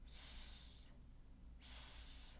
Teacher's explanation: for the S, S, we are not using our vocal cords. The tip of the tongue is down with the middle of the tongue up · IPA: /s/